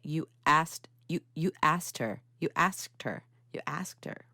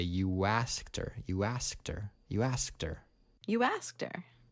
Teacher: and then the next word beginning with a vowel sound you want to add a little bit more ooh or a w sound in order to link them and make it more connected